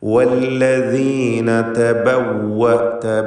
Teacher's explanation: വാവുകൾ 2 ചുണ്ടുകളിൽ നിന്ന് തന്നെ ഉച്ചരിക്കണം. ചുണ്ടുകൾ വൃത്താകൃതിയിലായിരിക്കും വാവ് ഉച്ചരിക്കുമ്പോൾ.